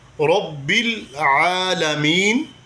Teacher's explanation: الحمد للہ، للہ لفظ اللہ کو باریک پڑھیں گے کہ اس سے پہلے زیر آ گئی۔ للہ رب را پر زبر ہے، را کو موٹا پڑھیں گے